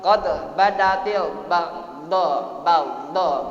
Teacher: Termasuk dua-duanya huruf qalqalah, huruf tafkhim, maka tebal, dibaca tebal huruf tafkhim. Baghdha dibaca mad wajib mutasil.